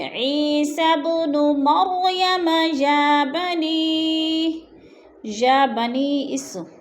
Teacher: عیسی ابن مریم یا بنی اس، ادھر مد منفصل ہے، حروف مدہ کے بعد حمزہ دوسرے کلمے میں آ گیا ہے تو مد منفصل۔ 4 الفی مد ہے، 4 حرکات کے برابر ہم نے اس کو کھینچ کر پڑھنا ہے۔